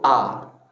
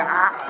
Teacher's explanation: Ingat, hamzah paling bawah, ain tengah. Jadi pindah dari bawah ke tengah.